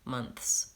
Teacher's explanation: Both months and Smiths, I think, need the TH and the S together, or we won't be able to tell what word you're saying. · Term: voiceless TH